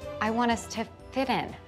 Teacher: the phrasal verb fit in links, the t becomes a d sound. I want us to fit in.